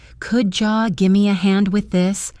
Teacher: Could you often blends to become could jaw. Give me reduces to give me and with this links together.